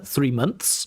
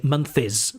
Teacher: they have to put the n the th and the s together